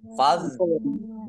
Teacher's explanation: Allahnya dibaca tebal karena harokat di depannya fathah. Lam fathah berdiri mat tobi'i.